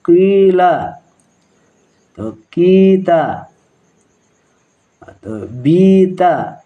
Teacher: maka qi tersebut dibaca panjang 2 harokat. Kita baca contohnya, misalnya qi mematikan ya, kemudian ditambah lagi huruf, misalnya la, qila ya, atau kita misalnya ya, qi ya, huruf ko berbaris bawah kemudian mematikan ya, maka qi itu dibaca panjang.